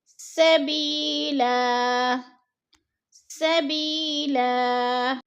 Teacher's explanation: اگلا لفظ ہے سبیلا، ادھر یا ساکن سے پہلے با کے نیچے زیر ہے تو یا مدہ ہو رہا ہے، یا مدہ کو ہم نے ایک الف دو حرکات کے برابر کھینچ کر پڑھنا ہے۔